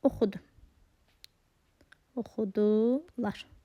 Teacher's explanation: Baxın, burada şudi keçmiş zamandır. Lar vurğu qəbul edəcək. Lardakı burada şəxs onluğudur.